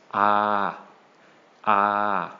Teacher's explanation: We have the letter ha heap once again, but this time, instead of a short ah sound, we have the long version, which is ah, ah.